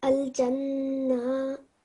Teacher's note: 1 second to Fatta, and it is Noon Mushadda, so 2-second nasal sound as well